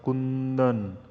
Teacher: કુંદનમાં કુંદન કુ ઉપર ભાર મૂકવામાં આવે છે